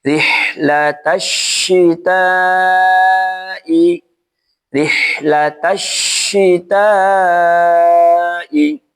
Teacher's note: huruf shin di sini juga ditahan sambil mengeluarkan anginnya